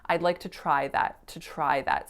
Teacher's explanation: they're not saying to, they're just saying t with a really short schwa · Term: reduce to schwa